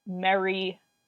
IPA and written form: mεɹi (merry)